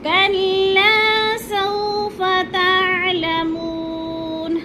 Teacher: کلا کو ہم نے تھوڑا سا کھینچنا ہے، الف مدہ ہے، لمبا کر کے پڑھنا ہے۔ کلا سوف تعلمون، اکثر کیا مسٹیک کرتے ہیں، ادھر سوفا پڑھ جاتے ہیں یا سو کو لمبا کر جاتے ہیں۔